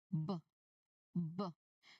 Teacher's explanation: So the sound here must burst out quickly and strongly when your lips are already open. So it's a voiced sound meaning your throat vibrates since you can feel the strong humming in your throat right away.